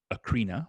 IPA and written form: əˈkɻinə (Corinna)